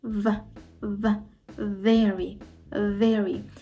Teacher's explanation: я торкаюся верхніми зубами до нижньої губи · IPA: [v]